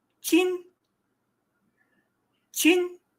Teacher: The I is a second tone. It is a rising tone. So it sounds like chin, chin, almost like you're asking a question.